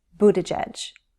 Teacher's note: The first syllable has a long oo. The double T becomes a flap T, so it will sound more like a D sound, Buttigieg.